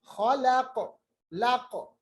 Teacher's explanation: मिन शर्रि मा खलक, खैन को खा जो है उसको मोटा पढ़ेंगे, अदनाई हलक यानी ये इब्तिदाई हलक जो है ऊपर वाला मुंह के जानिब से, वहां से खा अदा होता है खराश के साथ। खलक, लक, क़ाफ भी साकिन बनेगा, हालांकि आज हमने पढ़ा इसके कुतुबी जद में से है, कलकला हरूफ में से है, यहाँ पर कलकला कबीरा होगा।